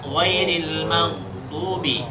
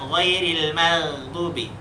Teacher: Dan dia huruf tebal. Arti huruf tebal itu tafkhim, pangkal lidah itu diangkat.